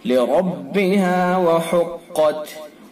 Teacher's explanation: را کو پر کریں گے، چونکہ را کے اوپر زبر ہے، اور را متحرک کا قاعدہ ہے کہ را کے اوپر زبر پیش ہوتا ہے تو را پر ہوتا ہے۔